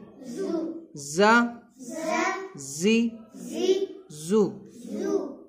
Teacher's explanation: اس میں سیٹی کی طرح آواز نکلے گی. 3 حروف جو ہے سیٹی والے حروف ہوتے ہیں جن کو حروف صفیریہ کہا جاتا ہے.